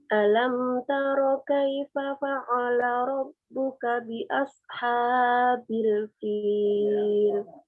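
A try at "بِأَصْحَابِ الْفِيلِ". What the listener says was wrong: Hanya 2 ketuk aja ya. Habil fil. Habil.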